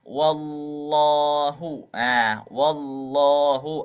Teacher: Haknya huruf lam itu dibaca tipis, mustahaknya itu ternyata huruf lam ini bisa juga dibaca tebal ketika sebelumnya ada harokat fathah ataupun doma